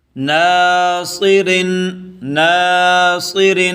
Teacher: یہ را بریک ہے، زیر والا را بریک ہوتا ہے